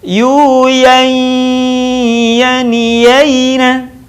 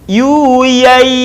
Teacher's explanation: Begitu juga dengan nun mati tanwin yang berwarna saat bertemu dengan huruf ya. Tahan suaranya dan keluarkan sebagiannya dari rongga hidung kita